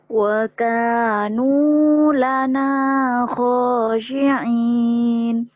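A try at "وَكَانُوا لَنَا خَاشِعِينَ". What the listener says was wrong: Tuh, ujungnya udah bagus. Nunya tadi rada ragu ya. Karena naik turun itu yang bikin sumbang. Wa kanu lana itu yang sumbang. Jadi kalau mau rendah sekalian gini. Wa kanu lana khashi'in. Mau rendah sekalian, mau tinggi. Wa kanu lana khashi'in.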